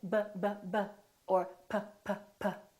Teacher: our lips right so if I say but Bubba or Poppa I'm putting my lips together both my upper lip and my lower lip are working